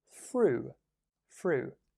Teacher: And again, it's a TH sound, although it might sound like an F with me.